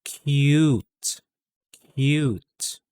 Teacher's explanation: the k sound and then followed by a y sound